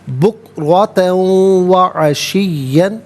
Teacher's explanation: بکرتن میں را پر زبر، را کو پر کر کے پڑھیں گے. تا پر 2 زبر کی تنوین، اسے واو کے ساتھ ملا کر واو کی آواز کو ادا کیا جائے گا. یرملون کا قاعدہ یہاں پر اپلائی ہوگا.